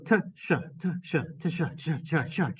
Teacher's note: the sound cha, as in cheese, is actually a combination of the sound ta and the sound sha. And they are crammed together until they are inseparable. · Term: affricate